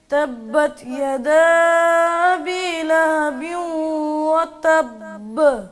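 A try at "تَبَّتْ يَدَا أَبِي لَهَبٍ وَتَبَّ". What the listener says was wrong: یدا پہ مد کریں گے. جب حرف مدہ کے بعد آگے حمزہ آ رہا ہے نا، یدا ابی، تو ہم نے اس کو مکس نہیں ہونے دینا. یدا بی یدا بی ایسے نہ ہو.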